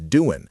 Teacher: And the G at the end of doing often gets dropped in casual speech. So it becomes doing.